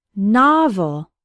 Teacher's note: Novel has 2 syllables, and the stress is on the first one.